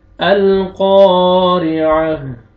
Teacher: ऐन फतहा और हा में चेंज करेंगे, ऐन फतहा हा सुकून अह, अल क़ारिअह। क़ाफ को आपने खींचना है और क़ाफ को मोटा करके पढ़ेंगे, ठीक है। अलिफ मद है, अलिफ से पहले फतहा, क़ाफ को आपने खींचना है, आइन को अपने मखरज से अदा करके हा का साउंड आना चाहिए।